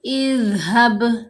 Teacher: ذال کو پڑھتے ہوئے ہماری جو زبان ہے وہ دانتوں کے درمیان میں آنی چاہیے · ذال کو بالکل نرم پڑھنا ہے اور ہلانا نہیں